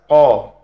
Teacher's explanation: huruf qf itu ada di Pangkal lidah dengan langit-langit atas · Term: huruf qaf